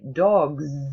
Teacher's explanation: you say dogs and you put your fingers on your throat now the S sound is really pronounced like Z and you do feel a vibration